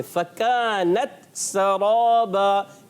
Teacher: کاف کو باریک رکھنا ہے اور را کو پر کرنا ہے